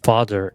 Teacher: the A vowel sound in the word father is read as open back unrounded vowel